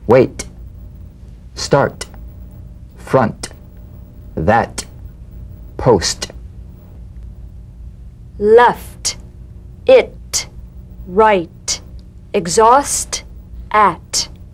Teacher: the unvoiced t-tong front palatal stop consonant cognate to the D the same staccato springing action as the D drumbeat with no voice forms the light tap of the t feel a gentle pulsation in the tongue now tap the drumbeat